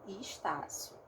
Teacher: Eu transformei o meu E num I. O meu S, em final de sílaba, ele é chiado, então ele é um ch, ele não é um s, tá? E aqui também o O, ato no final, vira um U.